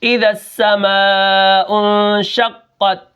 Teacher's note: شین کے اندر جو صفت ہے وہ ہے تفشی۔ شین کو پڑھتے وقت ہم کیا کرتے ہیں، منہ کے اندر آواز پھیل جاتی ہے